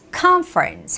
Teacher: the word conference conference has the first syllable stress